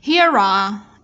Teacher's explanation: E âm câm, chúng ta sẽ nối âm. Chữ R, phụ âm R với âm A. Nguyên âm A bắt đầu của từ đằng sau.